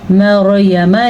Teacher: را کو پر پڑھنا ہے، را ساکن سے پہلے زبر ہے